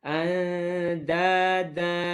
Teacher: Hujung lidah bertemu dengan belakang gigi atas. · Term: huruf dal